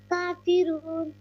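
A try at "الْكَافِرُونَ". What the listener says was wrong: کھڑی زبر ہے نا کاف پہ، تو اس کو لمبا کیوں نہیں کیا 2 سیکنڈ؟ 1 سے 2 سیکنڈ لمبا کیوں نہیں کیا؟ کافرون،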